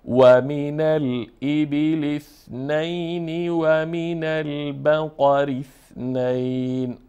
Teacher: حرف ر باریک خوانده میشه